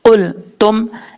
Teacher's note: क़ाफ रूफ़ मुस्ताला में से अपुर पढ़ा जाएगा, ता बरीक पढ़ा जाएगा। इसका मखरज, ता का मखरज है जुबान की नोक ऊपर वाले दांतों की जड़ों से लगे तो ता पढ़ा जाता है